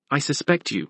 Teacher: the verb has stress on the second syllable